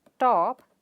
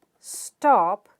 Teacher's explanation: top is aspirated but stop is not aspirated